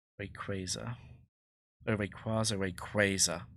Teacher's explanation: you're putting stress on the penultimate syllable of the word. And long a might actually be correct.